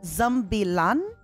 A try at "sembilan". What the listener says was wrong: Sembilan with S.